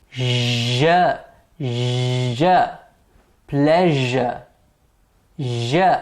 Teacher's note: Now the tip or the blade of the tongue is the active articulator and the teeth ridge is the passive articulator. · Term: palato-alveolar consonants